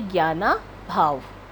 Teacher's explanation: प्रथम स्वर के अंत में अ और द्वितीय स्वर के प्रारंभ में अ दोनों मिलकर आ अर्थात दीर्घ हो रहे हैं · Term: दीर्घ स्वर संधि